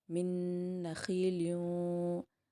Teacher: نون پر تشدید ہے، اسی لیے نون پر غنہ کرتے ہوئے آگے جائیں گے